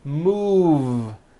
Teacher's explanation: Move has that voiced V sound.